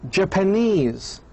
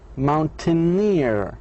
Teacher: The primary stress is on the first syllable of the suffix.